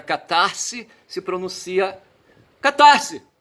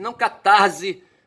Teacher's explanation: ele está entre uma consoante e uma vogal, então não se aplica a regra do som de S como Z